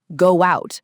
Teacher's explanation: We don't say go out, we become go out. That little W glides between the two vowels. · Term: vowel to vowel linking